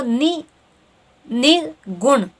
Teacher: न पे भी आपका जोर पड़ रहा है और ग पे भी जोर पड़ रहा है।